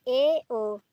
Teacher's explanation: अर्धसमवृत्ति स्वर, समवृत्ति की अपेक्षा थोड़ा मुख खुलता है। जैसे ए ओ, ये क्या हो जाएंगे, अर्धसमवृत्ति स्वर हो जाएंगे, अर्धसमवृत्ति स्वर।